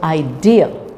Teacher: idea so say this is all often pronounced wrongly so idea so the dear part is more prominent